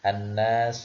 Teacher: alif lam yang pertama sebelum huruf-huruf non itu tidak terbaca